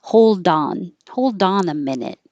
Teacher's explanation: if there's a vowel after it, you will release the D.